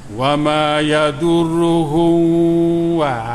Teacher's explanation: tutup mulut molek, sebab nyatakan izhar tu maknanya nyatakan mim. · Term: izhar syafawi